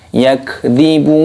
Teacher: kafnya sukun dimatikan, jangan dikolkolah karena huruf kaf ini bukan termasuk huruf yang mempunyai pantulan kolkolah